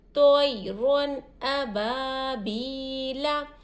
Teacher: ज़ाहिर करके पढ़ रहे हैं। तनवीन की आवाज़ को हम नाक में भी नहीं छुपा रहे, इख्फा भी नहीं कर रहे और गुन्ना भी नहीं कर रहे, ज़ाहिर करके पढ़ेंगे। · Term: इजहार